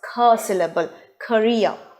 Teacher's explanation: if the cur sound is at the beginning position of a word it is aspirated and it sounds as cursillable career and the second information is